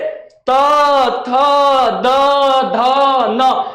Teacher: जीभ जो होता है वो बोलने में हमारे दांत में टच करता है, और जब यह दांत में टच करता है, ठेकता है, तो इसको हम लोग बोलेंगे दंत।